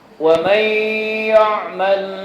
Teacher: nun mati ketemu dengan ya. Nunnya dimasukkan ke dalam ya. Nunnya lebur. Kemudian nunnya lebur, dikasih tasydid, dikasih lisannya diangkat. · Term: idgham